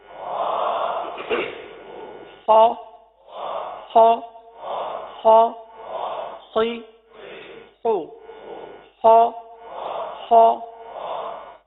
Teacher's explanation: خا حرف کو پر ادا کرنا ہے کیونکہ حروف مستعلیہ ہے